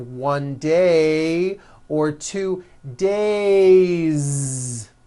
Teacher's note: It's not days, unvoiced, it's days with a voiced Z ending.